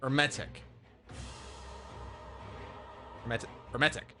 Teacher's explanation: silent H emphasis on 2nd e